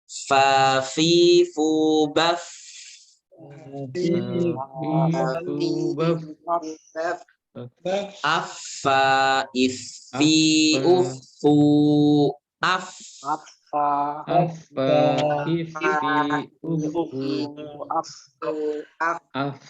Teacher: ujung 2 gigi 1 bertemu dengan perut bawah, perut bibir bawah maksudnya. Yang fa ya kedua bibir dibulatkan atau dimonyongkan. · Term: huruf Fa